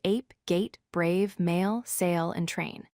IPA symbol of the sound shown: eɪ